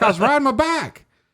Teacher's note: the word back and bike were both pronounced back